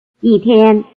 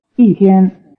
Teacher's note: the tone on the number 1 also becomes falling before the high tone of the word 天